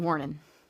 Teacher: words that end in ing. The G is cut off more often than not.